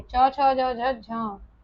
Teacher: जो च वर्ग होता है वो हमारा स्पर्श संघर्षी होता है